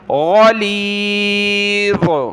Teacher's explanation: غین اور ذا کو ہم نے موٹا پڑھنا ہے